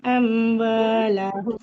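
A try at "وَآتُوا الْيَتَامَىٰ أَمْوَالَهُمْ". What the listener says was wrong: Mimnya lebih panjang. Antara ta dengan mim. Antara ta dengan mim lebih panjang huruf mimnya. Karena dia matobinya bertemu dengan hamzah di depannya. Jadinya mat jais. Wa atul yatama amwalahum.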